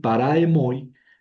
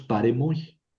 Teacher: Aquí lo que hicimos es quitar una A y en vez de decir paraemoi, decimos paremoi